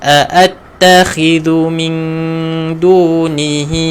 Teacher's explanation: dhu kena keluarkan hujung lidah